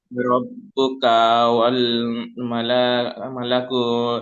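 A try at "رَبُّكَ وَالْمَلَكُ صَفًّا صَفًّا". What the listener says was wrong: হারাকাত রয়েছে, একদম টান হবে না। ওয়াল মালাকু, ওয়াল মালাকু, জলদি পড়তে হবে। রব্বুকা ওয়াল মালাকু, জলদি পড়তে হবে।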